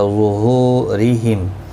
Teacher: را زیر کی وجہ سے باریک پڑھا جائے گا. ہو واو مدہ ہے، ایک الف کی مقدار کے برابر کھینچ کر پڑھیں گے.